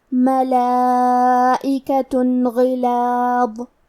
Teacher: غین حروف التفخیم میں سے ہے تو ہم یہ حرف کو موٹی آواز میں پڑھیں گے. کیونکہ اس کے نیچے زیر ہے تو ہمیں زیر کو ظاہر کرنا ہے۔